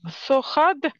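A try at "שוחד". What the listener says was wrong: Нет, там ше, шин, Сохад.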